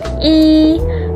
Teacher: Vokal I disebut sebagai vokal tinggi depan. Artinya saat kita mengucapkan I, lidah kita terangkat ke atas dan ke depan dan kedua bibir kita agak terentang ke samping seperti saat kita tersenyum